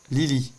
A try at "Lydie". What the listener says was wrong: Lydie, avec un D. Lydie.